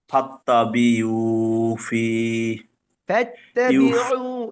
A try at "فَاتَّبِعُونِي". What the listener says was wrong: এটা নুন নুন নুন ফাত্তাবিউনি